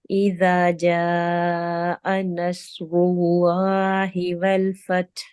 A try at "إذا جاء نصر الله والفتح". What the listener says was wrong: Do the ha. I don't hear any ha. And make the jim lighter, not ja, ja. إذا جاء نصر الله والفتح. You see, you hear the ha sound.